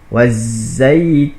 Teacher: zai yang kedua ini dia mesti berdesing seperti lebah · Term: huruf za, zai